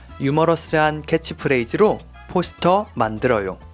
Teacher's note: we don't pronounce the H sound from the word humorous